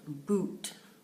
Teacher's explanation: the tongue is raised in the back your tongue is tense your lips are forward